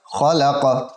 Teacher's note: यहाँ पर क़लक़ला होगा वक़फ़ की सूरत में, क़ाफ़ पर